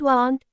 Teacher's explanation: In British English, A often sounds like a short O, especially after the letters W or Q. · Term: British A